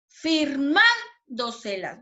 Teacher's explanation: ¿Dónde sonó más fuerte? ¿Dónde lleva la sílaba tónica? En la sílaba man, ¿cierto?